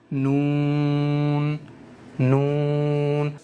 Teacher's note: نون کے اندر ہو رہی ہے زبان کی نوک استعمال، یہ زبان کی نوک اوپر کے مسوڑوں پر یہاں ٹچ ہوگی